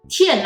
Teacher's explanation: 53 represents high falling. Why is it called high falling? Because 5 is a high sound. When it drops to 3, use high falling.